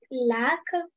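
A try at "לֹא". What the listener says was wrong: То. Но буква алиф не читается, и под ней ничего не, ну, нет. То.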